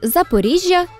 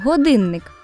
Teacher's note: звук при подовженні є більш м'яким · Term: подовження